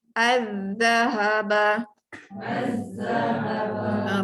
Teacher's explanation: Kalau nak bunyi lam tu jadi susah. Jadi tak bunyikan lam Masuk terus pada zal. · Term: alif lam syamsiah